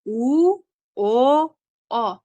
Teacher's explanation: Talaffuz qilganimizda bu unliklarimiz tilimizni nisbatan anchagina orqasida hosil boʻlyapti. Shu sabab nomi ham o'zi bilan orqa qator unlar. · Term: orqa qator unlilar